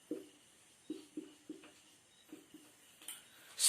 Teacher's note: सा सरौते का इसका उच्चारण स्थान है सरकार दंत, दांत से उच्चारण होता है, इसलिए हम इसे दंतव्य कहते हैं